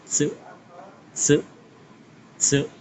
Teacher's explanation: cara pengucapannya teman-teman bisa letakkan ujung lidah ke bagian gigi seri atas bagian belakang. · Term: pengucapan se